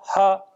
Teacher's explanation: तो जैसे आपने हा बोला, हा, तो जीवा तो जिस स्थान पर रहती है उसी स्थान पर रहती है, जीवा ने कोई प्रयत्न नहीं किया ना हा बोलने में। तो इसी प्रकार कई आचार्यों का यह मत भी है कि हकार ईषत् विवृत करण नहीं, अपितु क्या है, विवृत करण है।